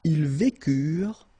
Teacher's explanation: mark for the plural, and T is not pronounced phonetically